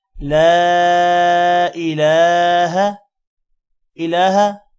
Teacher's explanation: لا الہ، لا الہ، لام کے بعد الف ہے، الف پر مد ہے، تھوڑا سا لمبا کریں گے۔ لا الہ، الہ لام پر کھڑی زبر ہے، اس کو بھی لمبا کریں گے کھڑی زبر کی وجہ سے۔ لا الہ، ہا کو لمبا نہیں کرنا کیونکہ اس پر زبر ہے۔